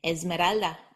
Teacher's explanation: before the letters b v m n D or G then the s or Z should be voiced making a z sound